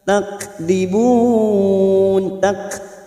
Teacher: kaf sukun hamas harus nampak sifat hamasnya dari huruf kaf